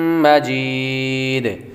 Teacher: آخر میں دال کے اوپر جو تنوین ہے وہ وقف کی وجہ سے ختم ہو رہی ہے, آخری حرف ساکن ہو رہا ہے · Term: مد عارض